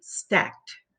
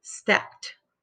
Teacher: When you have an unvoiced sound, end sound, before you add the ed, it makes the t sound for the ed. And it's not a syllable, it's part of the same word. So we say stacked.